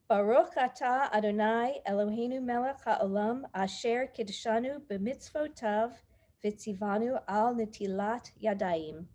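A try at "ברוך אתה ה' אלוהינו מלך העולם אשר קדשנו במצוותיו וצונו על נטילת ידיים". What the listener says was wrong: Yes, thank you.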